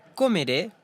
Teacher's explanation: Le E avec accent dans comeré, je mangerai, ne devient pas soudainement en E ouvert comme ce serait le cas en français.